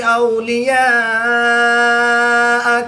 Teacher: الف مدہ کے بعد حمزہ اسی کلمے میں ہے تو یہاں پر مد متصل ہوگی، 3 سے 5 الف تک کھینچ کر پڑھیں گے. واو مدہ کے بعد تا کی زیر کو ساکن کر دیں گے تو یہاں پر وقف کی حالت میں مد عارض ہوگی، 2 سے 3 الف تک کھینچ کر پڑھیں گے.